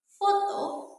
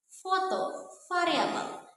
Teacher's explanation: aliran udaranya itu dia keluar melalui celah sempit antara bibir bawah dan juga gigi atas sehingga menimbulkan sebuah gesekan. Nah, itulah yang disebut sebagai bunyi frikatif teman-teman ya.